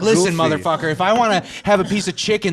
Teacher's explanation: all the vowels are shorter they're cut down it sounds more Stern